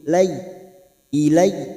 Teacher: fathah bertemu ya sukun huruf layin. Layin artinya lunak, melunakkan 2 huruf ini.